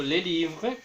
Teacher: Esa S del plural es muda.